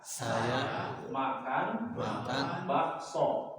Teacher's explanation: Kalau sa namanya istifal. Istifal itu mangap, tidak ada yang ke atas.